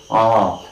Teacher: at the extreme bottom of the mouth cavity very low position and hence we say that ah is all right an open · And open position is of course right, at the tongue is at the bottom of the mouth cavity, the tongue is not lifted. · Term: open vowel